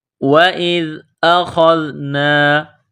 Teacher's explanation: وَإِذْ أَخَذْنَا، وَإِذْ حمزہ کو ذال کے ساتھ ملانا ہے۔ ذال کو پڑھتے وقت زبان باہر نکالیں گے، ذال کو نرم کریں گے۔